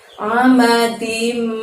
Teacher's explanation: Ada amadim pakai ain, jadi dari tenggorokan saja mengeluarkan huruf A-nya